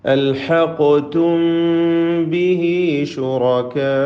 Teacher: അൽഹഖ്തും ബിഹി ശുറകാ, അൽഹഖ്തും സാക്കിന മീമിനെ ഇൽഹാർ ഇഖ്ഫാ ഷഫവി നൽകിക്കൊണ്ട്, സാക്കിന മീമിന് ഇഖ്ഫാ ഷഫവി നൽകിക്കൊണ്ട് അവ്യക്തമാക്കി മണിച്ചുകൊണ്ട് ഉച്ചരിക്കണം. ശുറകാ റാഇന് തഫ്ഖീമാണ്.